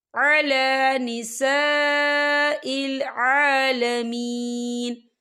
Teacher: خالی الف سے پہلے زبر ہے اور اس پہ مد بھی ہے، تو ہم اسے 4 حرکت کے برابر کھینچ کے پڑھیں گے۔